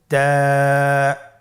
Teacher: তা হরফটি বারিক হরফ এবং এক আলিফ টেনে পড়তে হবে। · জিহ্বার আগা সামনের উপরের 2 দাঁতের গোড়ার সঙ্গে লাগিয়ে উচ্চারিত হয়।